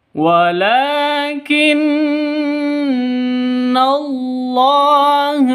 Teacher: Walakin Allah, wala panjang 2 ketukan karena ada tanda berdiri di atasnya lam. Walakin non tasydid, gunnah musyaddadah, dengung 2 ketukan karena non tasydidnya berdiri sendiri, bukan karena bertemu dengan tanwin, bertemu dengan non sukun, atau bertemu dengan mim mati.